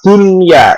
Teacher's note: Kalau dalam satu kalimat itu menjadi bukan idgham bi gunnah tapi izhar mutlak itu. Jadi tidak didengungkan, bahkan harus jelas, tidak boleh berdengung. Contohnya adalah lafaz dunya, itu ada non sukun bertemu dengan ya.